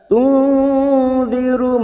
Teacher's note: Nun sukun bertemu dal ikfa hakiki, kita samarkan bunyi nun sukun 3 harokat.